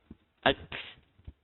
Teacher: Huruf kaf dan juga huruf ta dia ada hams dia.